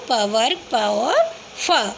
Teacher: ऐसे वर्ण जिनका उच्चारण करते समय ओष्ठ मिलते हैं ओष्ठ्य वर्ण कहलाते हैं